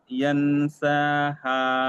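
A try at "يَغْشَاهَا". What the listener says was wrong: না, এটা নুন নয়, এটা গয়েন। ইয়াগো, ইয়াগো শাহা। ইয়াগো শাহা। ইদা ইয়াগো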